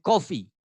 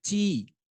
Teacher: la I de coffee, café, es una I corta, mientras que la I de té, la palabra té en inglés que se escribe tea, suena tea, esa I es más larga. Y esas 2 I son diferentes, son características del inglés.